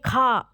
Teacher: जब कहेंगे खा तो गले से तेज आवाज निकालनी पड़ती है थोड़ी ज्यादा मेहनत लगती है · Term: महाप्राण